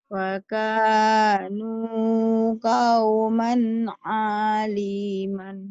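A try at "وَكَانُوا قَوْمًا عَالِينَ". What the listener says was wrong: Alina, bukan alima. Nun. Ayo ulang lagi.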